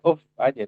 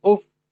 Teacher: Jadi tidak dibaca uf aja, tapi uf. Tekan dorong lebih kuat supaya kedengaran bagi orang bahwa fa itu adalah harfu almusyaddadah.